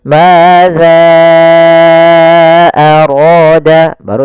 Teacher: jangan terbaca dengan zai tapi tetap dza yaitu ujung lidah menempel dengan gigi dari atas maza aru dibaca dengan ee panjangkannya dulu empat harakat baru kita baca a-nya. · baru dibaca dengan panjangkan za-nya dulu 4 harokat, baru kita baca a-nya. Kemudian pelafal ra, di sini ada mad tabi'i, fathah bertemu alif, ra-nya dibaca dengan tebal karena ra berharokat fathah. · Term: mad jaiz munfasil